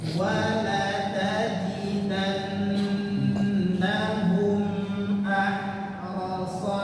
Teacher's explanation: Ro dibaca tebal, shad juga dibaca tebal.